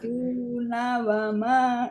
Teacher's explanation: Yang panjang dunya, nanya pendek terus wama.